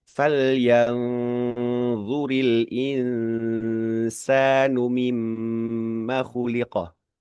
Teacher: karena huruf dha itu dia pengucapannya kayak kita mau menggigit lidah tapi kalau huruf sin itu lidah itu justru lebih turun lagi nah ke gigi seri bawah gitu nah tentunya akan berbeda kan gitu eh, istilahnya berbeda ya sedikit atau banyak itu bisa bisa dinilai oleh sahabat-sahabat sendiri. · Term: ikhfa